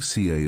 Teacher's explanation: British accent tends to soften the R, so car sounds more like CA